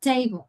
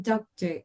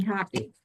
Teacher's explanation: We pronounce the first syllable a little bit stronger with a little bit more of an accent, and then the rest of the word. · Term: stress